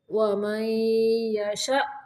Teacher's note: یہاں پہ جھٹکا دیں گے کیونکہ حمزہ ساکن ہے